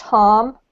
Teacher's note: So if you pronounce it in the British accent, it's pronounced harm, and it rhymes with calm. If you pronounce it in the US accent, it's pronounced harm with an R.